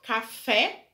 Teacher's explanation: Aqui é uma dissílaba, uma palavra que tem duas sílabas. A sua sílaba tônica é a última, café, e é acentuado porque é uma oxítona, ou seja, a sílaba tônica tá na última, terminada em E, café.